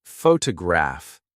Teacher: photograph noun is stressed on the first syllable